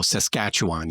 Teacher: it's emphasis on the second syllable, and you just let everything else just go